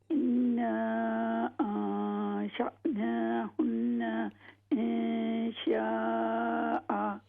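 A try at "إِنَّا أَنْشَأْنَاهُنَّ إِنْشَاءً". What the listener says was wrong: ہاں جی، غنوں کی مقدار ایک جیسی ہونی چاہیے، یہاں پر دو غنے ہو رہے ہیں نا، آپ کو پتہ؟ ہاں جی، نہیں، انا کی بجائے انا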